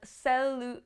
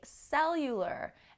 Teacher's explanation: That's a difficult one for me because of the L's, celular. So the stress is on the end in Spanish, but in the beginning in English.